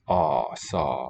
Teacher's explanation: it's the lower mid vowel. Ah, saw, rounded O. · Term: Open O